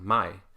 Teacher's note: the diphthong is much more frontal, my.